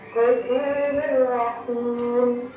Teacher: memasukkan suara nun sukun atau tanwin ke dalam huruf berikutnya dengan tidak berdengung atau tidak sangau di hidung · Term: idgham bil gunnah